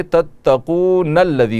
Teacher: direct نون کو لام سے ملائیں گے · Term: وصلی